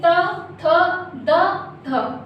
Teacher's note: तो इस तरह से जब आप ये शब्द बोलते हैं तो आपकी जीभ दांतों को स्पर्श करती है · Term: दंतय